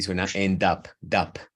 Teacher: Puedes pegar esa D, incluso la puedes pegar al up y suena end up, dup.